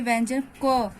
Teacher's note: जैसे हम लोग बोलते हैं व्यंजन क, जो हम लोग क बोलते हैं, तो आप लोग ये देखोगे कि क जब बोल रहे हैं तो उसका एक साउंड आ भी निकल रहा है